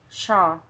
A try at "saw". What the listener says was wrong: Okay, not shaw. This is how you say it, shaw, but it should be saw. Like oh, saw. Yes, that's saw.